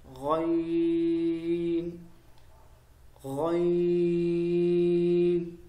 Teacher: گلے کے اس حصے سے جو منہ کی طرف ہے